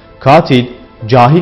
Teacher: Bu ses, bu harf vurguyu kendi üzerine çeker. Örnek, katil, cahil gibi kelimelerde vurgu ilk hecede yani uzun A sesinin olduğu hecededir.